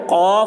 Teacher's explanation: غین، خا ان کا مخرج ابتدائی حلق ہے، یعنی منہ کی طرف والا حصہ، منہ جو اوپر ہے تو اوپر والا حلق کا جو حصہ ہے وہاں سے غین اور خا یہ ادا ہوتے ہیں۔ قاف، کاف زبان کی جڑ اوپر کے تالو سے لگائیں تو قاف نکلتا ہے، ٹھیک ہے۔ زبان کی جڑ کو اوپر کے تالو، اوپر کا جو حصہ ہے اس کو تالو کہتے ہیں، اس سے لگانے سے قاف نکلتا ہے۔